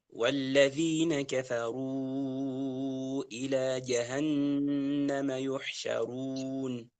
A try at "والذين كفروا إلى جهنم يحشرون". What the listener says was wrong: فخم الراء، يحشروا.